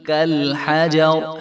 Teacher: اگر ہم یہاں پہ وقف کریں گے تو یہ ساکن ہو جائے گی، پھر بھی اس را کو جو ہے ہم موٹا پڑھیں گے · قاف بھی باریک ہے، لام بھی باریک ہے، حا بھی باریک ہے، جیم بھی باریک ہے ، اور آگے را کے اوپر زبر ہے، اور اگر ہم